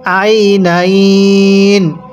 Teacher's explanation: শেষ হরফের পূর্বে যদি ইয়া থাকে তাহলে আমরা সেখানে তিন আলিফ টেনে পড়ব